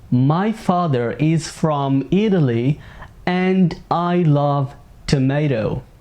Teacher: T between two vowels sounds like a soft D.